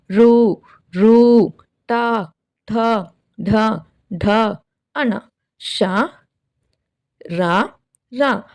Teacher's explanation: అంగిలి యొక్క పై భాగము నుండి పుట్టిన వాటిని మూర్ధాన్యములు అంటాం